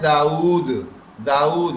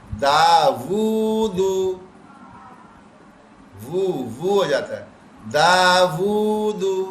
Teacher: اردو میں ہم کہتے ہیں داؤد، داؤد حضرت داؤد علیہ السلام، اور عربی میں کیا ہو جاتا ہے واو پہ الٹا پیش ہے داوود، وو ہو جاتا ہے داوود.